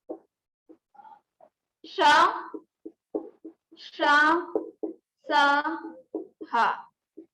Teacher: इन व्यंजनों का उच्चारण करते समय वायु मुख के विभिन्न भागों से टकराकर ऊष्मा उत्पन्न करती है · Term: ऊष्म व्यंजन